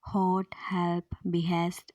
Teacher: तो इसको बोलते समय ऑब्स्ट्रक्शन हमारे गले में होती है एंड इसमें वोकल कॉर्ड्स होती हैं वाइड अपार्ट, हेंस ह इज ग्लोटल वॉइसलेस फ्रिकेटिव। इसके एग्जांपल्स हैं हॉट, हेल्प, बिहेस्ट एट्सेट्रा।